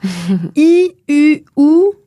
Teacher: c'est les voyelles qu'on dit fermées, c'est-à-dire qu'ils sont articulées avec une toute petite ouverture de la bouche. Donc, la bouche est presque fermée.